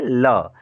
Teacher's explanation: ल, पार्श्विक वर्ण क्या है, ल। ये हवा जीभ के पार्श्व यानी बगल से होकर के निकलती है। ल का उच्चारण करने में जीभ क्या करती है, जीभ के बगल से हवा निकलता है। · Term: पार्श्व व्यंजन